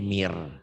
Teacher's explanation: Jadi idgom itu kalau nun mati atau tanwin ketemu huruf-huruf idgom yang 6 ini, bunyi N-nya melebur, berubah menjadi huruf di depannya.